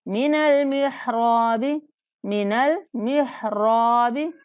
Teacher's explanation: را کو ایک الف کے برابر لمبا کرنا ہے موٹا پڑھتے ہوئے